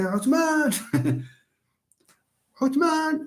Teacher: You have the vowels there. You have lengthened the vowels.